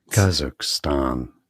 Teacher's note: So that's a stress on the first syllable